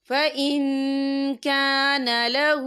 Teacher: اور آگے دیکھیں لہو، تو یہاں پہ الٹا پیش بھی ہے اور اس پہ چھوٹی سی مد بھی ہے، تو ہم اسے 3 یا 4 حرکت کے برابر کھینچ کے پڑھیں گے